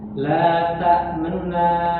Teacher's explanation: raum itu membaca sebagian besar harakat domahnya